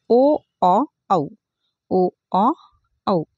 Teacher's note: कंठ आणि ओठ या दोन्ही स्थानापासून उच्चार होणारे वर्ण म्हणजेच कोणते कंठोष्ट वर्ण आणि ते आहेत ओ औ ओ औ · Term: कंठोष्ठ वर्ण